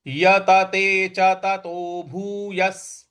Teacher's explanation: स का उच्चारण ले आना है यहां पे हमको विसर्ग का उच्चारण भी स ही ले आना है तो ये हो गया आपका यते च ततो भू यस य